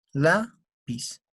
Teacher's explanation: ¿Dónde tenemos la mayor fuerza de voz? en la sílaba la.